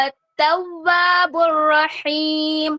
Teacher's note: اپنے ہونٹوں کو اچھے سے گول کرنا ہے، لیکن جیسے ہی ہم زبر ادا کریں گے تو ہمیں اپنا منہ کھولنا ہے